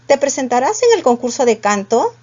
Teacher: si podía responder con un sí o un no la entonación era ascendente